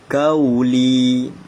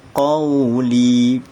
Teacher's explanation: Dia bukan kauli tapi dia qauli. Kena tebal. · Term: huruf qaf